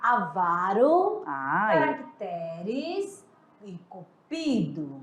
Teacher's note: palavras paroxítonas, que são aquelas que o som é forte na penúltima sílaba.